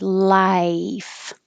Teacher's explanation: The vowel is I, so you need time for your tongue to rise.